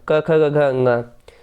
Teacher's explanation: तो कंठ से होता है क वर्ग का उच्चारण